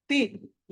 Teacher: ఈ తి అన్నది అల్ప ప్రాణము